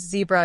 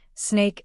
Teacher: Vibration in the throat while pronouncing sounds. Zebra is voiced. Snake is voiceless. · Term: Voicing